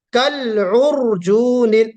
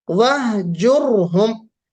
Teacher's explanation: را ساکن ہو اور را سے پہلے ضمہ ہو تو ہم اس را کو بھی پر پڑھتے ہیں